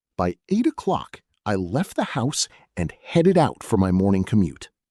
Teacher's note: Let's apply linking to headed and out so it flows effortlessly as headed out.